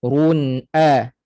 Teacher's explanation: Okey, kurang sempurna kadar dengungnya, iaitu satu harakat. Run'a, rasa di hidung. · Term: gunnah